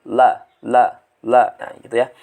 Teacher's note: ini memang bacaan yang paling paling sulit kemudian lah lah itu tepi lidah menempel dengan gusi atas ya